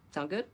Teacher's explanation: native speakers will often shorten that just to sound good with a rising intonation.